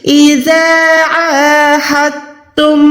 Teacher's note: جب بھی کسی حروف پہ شد آتی ہے تو ہم پیچھے والی حرکت والے حروف کے ساتھ ملائیں گے، یعنی یہاں پر ہم نے دال کو واضح نہیں کرنا بلکہ تا کو واضح کرنا ہے۔ تا کو واضح کریں گے تو دال چھپ جائے گا۔